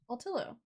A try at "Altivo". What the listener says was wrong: Altivo. I was like, there's a V in there. There's a hard consonant that we're not. No, I didn't, but I heard you say Altillo, and I was like, that's not right. It's too flowy.